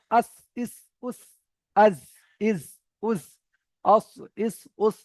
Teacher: জীবের আগা সামনের উপরের এবং নিচের দুই দাঁতের আগার সাথে লাগিয়ে উচ্চারিত হয়